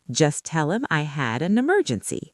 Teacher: We dropped the h in him. We linked had to a making had a and we linked an to emergency making an emergency.